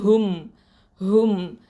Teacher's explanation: இந்த ஹ சொல்லும் போது இது வந்து அக்கசல் ஹல்க்கு கீழ் தொண்டையிலேருந்து வரணும்.